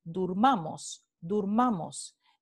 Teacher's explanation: la vocal media o se vuelve en la vocal alta posterior o cerrada redondeada